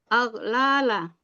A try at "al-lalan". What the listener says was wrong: Kalau al-lala harusnya al-lalan. Kalau al-lalan harus lan belakangnya.